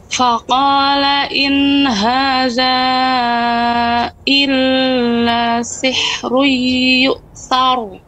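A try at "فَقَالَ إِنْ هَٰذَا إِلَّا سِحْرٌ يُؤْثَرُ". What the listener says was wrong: Nah, illa terlalu lama. Cukup dia di ayun saja. Illa sihri.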